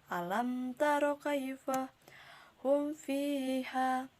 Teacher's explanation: Cara pengucapannya adalah mim harus dibaca jelas, harus tampak jelas tanpa gunnah, terutama kita bertemu dengan huruf fa dan waw. Sedikit pun mim tidak boleh terpengaruh makhraj fa dan waw, walaupun makhrajnya berdekatan ataupun sama. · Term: izhar syafawi